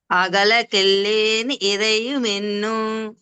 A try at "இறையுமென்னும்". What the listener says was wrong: ఉన్ను అనేది అంత దీర్ఘంగా చెప్పకుండా కొంచెం స్వారస్యంగా ఇరయుమెన్ను అలా హాఫ్ కట్ చేసి చెప్పాలి.